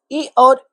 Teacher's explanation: इ और इ का उच्चारण स्थान तालु होता है।